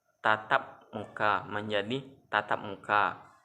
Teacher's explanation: Lepas nasal dilepaskan melalui keluarnya udara lewat rongga hidung.